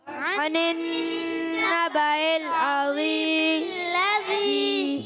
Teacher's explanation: میم کی زیر کو لام سے ملانا ہے